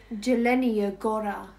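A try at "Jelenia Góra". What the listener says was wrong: It's not J. Y. Yelenia Gora.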